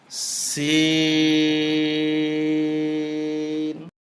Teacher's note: 4 আলিফ টানতে হবে, লিক পানসারের আওয়াজ হবে, জিহ্বার আগা নিচের দাঁতের আগায় লাগবে। সিন শিন 4 আলিফ লম্বা হবে, শুরুতে শীষ দেওয়া আওয়াজ হবে।